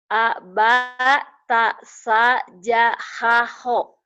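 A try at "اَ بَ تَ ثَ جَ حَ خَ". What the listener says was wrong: Nggak boleh ada yang panjang. Abatasa jahaho.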